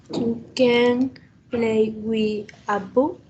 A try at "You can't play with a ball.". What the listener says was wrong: No se olvide de hacer el sonido de la T al final. You can't. You can't.